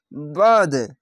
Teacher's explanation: কেন, এখানে জিম আছে, জিমের জায়গায় থামা ভালো, তার জন্য বাদ আইনটিকে মোটা করে গলা চিপে পড়তে হবে, আর এটিও মোটা করে, তার জন্য বাদ, এভাবে থেমে যেতে হবে, ধাক্কা মারতে হবে না, বাদ এভাবে থেমে যেতে হবে।